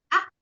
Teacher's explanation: pangkal lidah bagian belakang akan terangkat dan bertemu dengan langit-langit di atasnya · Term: alistiah